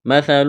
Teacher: سا کو پڑھتے وقت زبان تھوڑی سی باہر نکالیں گے